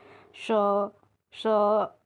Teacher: हमारी जीभ श का उच्चारण करने पर तालु से, यानी जैसे हम श बोल रहे हैं तो हमारी जीभ जो है तालु से टच हो रही है